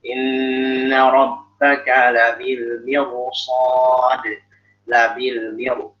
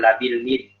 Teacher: Al-mirsad di sini rohnya roh tebal, ya. Karena di sini dia walaupun sebelumnya roh sukun, sebelumnya kasroh, tapi setelahnya adalah huruf itbaq dan istighfar.